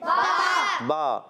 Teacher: बा का मखर है दोनों होठों के तर हिस्से से अदा होता है